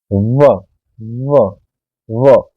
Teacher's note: व दंतोष्ठ है, यानी दांत और ओष्ठ दोनों का प्रयोग होगा। कैसे, जब हम व का उच्चारण करेंगे व, तो हमारे जो होठ हैं उनका भी प्रयोग होगा और जीवा जो है हमारे नीचे वाले दांतों के पीछे लगेगी, यहाँ पर लगेगी।